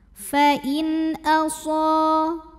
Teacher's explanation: Fa'in, in, ada izhar halqi. Karena nun sukun menghadapi huruf halqi atau tenggorokan yaitu hamzah, maka nun sukun dibaca jelas